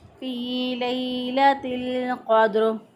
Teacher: लाम साकिन, साकिन हरफ पीछे वाले ज़बर ज़ेर पेश वाले हरफ के साथ मिलना जाता है, तो इसलिए हमने लाम साकिन को पीछे वाले ता के साथ मिला दिया, क्योंकि ता के नीचे ज़ेर है, तो ज़ेर के साथ इसको मिलाकर पढ़ा फ़ी लैलतिल क़द्र।